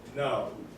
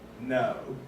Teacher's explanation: In American, it sounds like O, but in British, it starts with the schwa sound and makes it the sound like O. · In British accent, there is less jaw drop. That means when you say, as you say no in American, your jaw doesn't have to drop as many as the American accent, which makes the British accent way is like this.